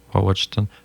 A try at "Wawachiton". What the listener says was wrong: Wawatston, ouais, tu l'as.